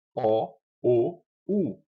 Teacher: as vogais O e U são produzidas com os lábios projetando-se para a frente, arredondados ou protusos, protuberante, e com a língua posicionada para trás, estando em posição mais alta na articulação da vogal U. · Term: vogais arredondadas